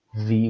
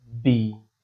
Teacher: the first one is labiodental V, V with a specific vibration, and the second one is going to be B, B, using both lips, but we hardly use it.